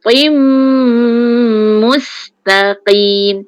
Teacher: dengung walaupun to tu tebal, mim tu nipis. Tim, yang tim, mim tu nipis.